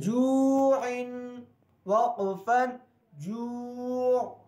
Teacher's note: جو میں ناک میں آواز نہ جائے